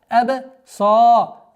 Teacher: Долгота в размере двух огласовок фатхи над буквой сад.